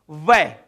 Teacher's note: हमारे ऊपर वाले दंत और नीचे वाला ओष्ठ टकरा रहा है, वै। वै नीचे वाले दांत नहीं हो तो भी वह बोला जा सकता है, लेकिन ऊपर वाले दंत और नीचे वाला ओष्ठ टकरा रहा है। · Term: दंतोष्ठम